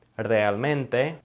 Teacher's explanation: So if there's two R's together, then it's gonna always produce that rolling R sound. Also, if you have an R at the beginning, a single R by the way, at the beginning of a word, then you're also gonna produce that rolling R sound